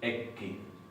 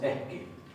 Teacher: En el caso de lo que se llaman tenuis o consonantes planas o oclusivas, las más simples, P, K, T, lo que tenemos es que se aspira, se produce una aspiración antes, entonces se pronuncia esto HK, esto se va a pronunciar HT, esto se va a pronunciar HP.